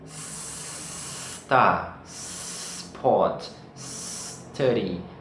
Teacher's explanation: porque os brasileiros geralmente colocam uma vogal antes desse S